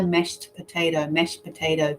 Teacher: that can change when they put together mashed potato mashed potato we lose the sound of the d there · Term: connected speech